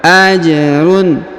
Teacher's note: huruf ja berharakat sukun maka kita pantulkan